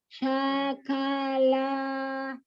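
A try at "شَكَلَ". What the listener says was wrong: Jadi gini ya, huruf yang terakhir itu jangan sampai diseret ya. Jadi karena harokatnya sama ya. Harokat fathah, terus kemudian dia pendek ya, satu harokat.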